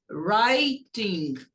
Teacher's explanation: E não pronuncia o W. Começa a pronunciar do R.